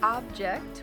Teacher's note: but the emphasis is different and changes the meaning is object object with an emphasis on the first part of the word is a thing